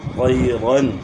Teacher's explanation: أَرْسَلَ عَلَيْهِمْ یہاں جو ہے نا یائلین ہے۔ طَيْرًا طا کو موٹا پڑھنا ہے، اور یہاں یائلین ہے